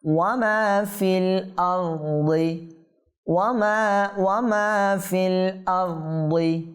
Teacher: মা টানতে হবে, ফা লামের সাথে যুক্ত হবে